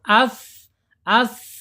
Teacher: Kemudian secara sifat ada di alhams ya yaitu mengalirnya nafas ketika diucapkan ketika tsa ini harakatnya sukun. As as ya mengalir ya jangan ditahan mengalir.